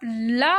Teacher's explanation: उच्चारण करते समय हमारी जीव का अग्रभाग मसूड़े को स्पर्श करता है जिससे प्राणवायु का मार्ग अवरुद्ध हो जाता है · आपकी जीभ जो है वो बीच में आके मतलब बीच में रास्ता रोक देती है हवा का, तो हवा जो हमारी है वो मुंह के साइड से निकल जाती है, इसी को हम लोग पार्श्विक कहते हैं।